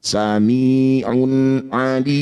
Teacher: tanwin baca dengan jelas, tidak usah dirubah, tidak usah dipanjangkan, juga tidak usah didengungkan. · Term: izhar halqi